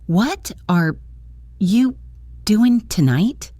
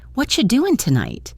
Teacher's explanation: The what are you mashes together to sound like whatcha and the g at the end of doing is often dropped which is very common in informal speech.